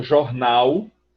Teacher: aquele L que é uma semivogal, na verdade, da pronúncia jornal. Eu, quando transcrevo isso, transcrevo com W, porque o que eu escuto, na verdade, é uma semivogal.